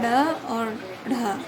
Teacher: उच्छिप्त का अर्थ होता है फेंका हुआ या गिराया हुआ। इन व्यंजनों के उच्चारण के समय जीवा के अग्रभाग को तालु से सटाकर झटके के साथ नीचे गिराया जाता है।